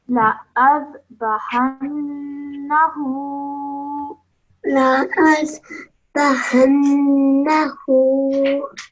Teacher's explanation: This noon with the shadda produces a nasal sound, which you need to hold in your nose for 2 seconds. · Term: gunna sound